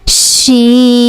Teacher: this sheen originates when the tongue center region touching the hard palate